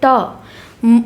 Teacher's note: मूर्धन्य अल्पप्राण अघोष वर्ग का उदाहरण है ट मूर्धन्य ट वर्ग का होगा अल्पप्राण प्रत्येक वर्ग का पहला तीसरा पांचवा व्यंजन होगा और अघोष प्रत्येक वर्ग का पहला दूसरा व्यंजन होगा।